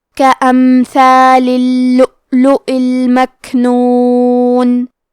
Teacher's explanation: کلمت کے امثال میں میم ساکن کو ظاہر کریں گے.